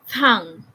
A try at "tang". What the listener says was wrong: Tamang may hangin lang. Huwag din yung may tang na may letter H, okay?